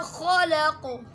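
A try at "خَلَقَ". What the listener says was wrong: खलक, खा होंठ गोल नहीं करने हैं और खा को भी गोल नहीं करना है।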